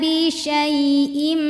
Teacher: duanya Enggak karena ini mad wajib jadi ini enggak boleh dua syinnya panjangin dulu nanti di ujung biar ke bawah hamzahnya agak ditekan